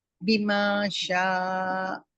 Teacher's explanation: بما شاء ما مد لیٹر دو کاؤنٹ ہوتا ہے